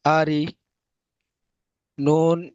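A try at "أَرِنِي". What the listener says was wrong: নুন ইয়া জের নি, টান দেন ভাই। আরিনি। ইয়া সাকিনে ডান দিকে জের এসছে।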